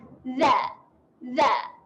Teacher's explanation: huruf zal makhrajnya ialah hujung lidah bertemu hujung gigi atas. Dan kita kena jelir lidah.